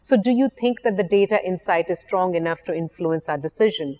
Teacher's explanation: there is a rising intonation at the end of that statement her tone changes it becomes a question rather than a statement